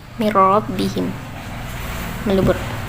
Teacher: Hukum tajwidnya yaitu yang pertama idgham bila gunnah, sebab nun mati menghadapi huruf ra